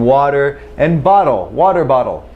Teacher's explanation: we've got a reduced T rendered as a D in water and bottle